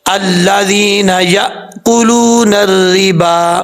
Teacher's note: حمزہ ساکن جو ہے وہ جھٹکے سے پڑھا جاتا ہے، اب یہاں پر حمزہ ساکن ہے، جھٹکے کے ساتھ پڑھا جائے گا۔